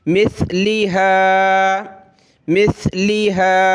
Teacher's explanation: حمزہ واو زبر او، او مثلہا، میم سا زیر مث، سا پہ زبان نکالیں تھوڑی سی